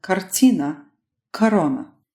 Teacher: Now, I said most unstressed syllables with a or o because there is one situation where that vowel sounds a little different. If that a or o vowel shows up in the syllable that comes right before the stress, then it starts sounding more like an a vowel, as in kartina or corona.